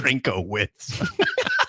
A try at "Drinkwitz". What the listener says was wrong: Drinkowitz. Just drink. There's no O. There's no O.